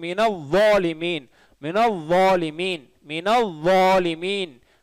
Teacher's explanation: வா உயர்த்தி சொல்லணும், சரிங்களா? உயர்த்தி தடிப்பமா சொல்லணும்